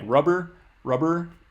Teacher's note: but you keep the voicing going all the way through · You stop voicing in the middle of that word for the P. If you say a word like rubber, buh, you keep the voicing going all the way through. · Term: voiced